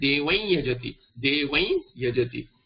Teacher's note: Like for example, devam yajati will become anuswara, deva, makara will become anuswara, and the pronunciation will be the nasalization of yakara. So this anuswara will change into a nasalized yakara. So you will get devai yajati, nasalization of yakara.